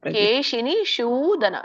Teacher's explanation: ಇದು ಕೇಶಿನಿ ಶೂದನ. ಶೂ ಮೇಲೆ ನಿಮ್ದು ನಾಲ್ಗೆ ತುದಿ ಇದೆಯಲ್ಲ, ಮೇಲೆ ಹತ್ಬೇಕು, ಶೂ ಬರ್ಬೇಕು. ಅಲ್ಲಿ ಕರೆಕ್ಷನ್ ಮಾಡ್ಕೊಳ್ಳಿ.